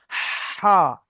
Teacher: হাটা কণ্ঠনালীর মাঝখান হতে হা উচ্চারিত হয়। কণ্ঠনালী মানে আমাদের যে শ্বাসনালী আছে না, একটা পাইপ টাইপের, ওর ভিতর থেকে বের হবে হ্যাঁ, হ্যাঁ, হা। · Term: বড় হা